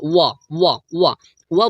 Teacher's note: व बोलने से आपको दंत और ओठ ये दोनों काम कर रहा है